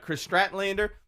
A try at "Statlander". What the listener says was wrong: There's no R in there. Stratlander.